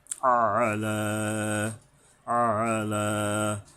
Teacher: এই আইন গলা চেপে লামের উপরে খাড়া জবর আছে, একালিপ টানতে হবে।